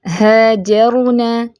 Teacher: اگلی مثال دیکھیں، ہاجرنا، ہاجرنا، را ساکن ہے، پر ہوگا، پیچھے زبر پڑی جا رہی ہے، ٹھیک ہے۔ ہا ٹھیک رکھنا ہے آپ نے، ہا نہیں کر دینا۔